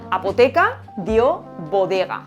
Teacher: Estos sonidos se han asimilado a los que tienen alrededor. P, T, K son sonidos sordos que están rodeados de vocales que son sonoros. Así que pasan a B, D, G, que también son sonoros. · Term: asimilación